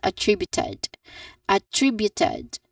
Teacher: has four distinct syllables starting with a short a vowel sound followed by tri which is the stressed syllable